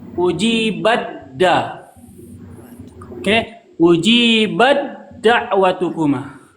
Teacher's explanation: Ta sukun bertemu dengan da. Diidghamkan, digabungkan jadi satu.